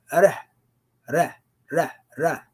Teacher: you actually have to touch the tongue on the top of the roof a little bit, with a little push of air to give a slight roll, but not a full roll.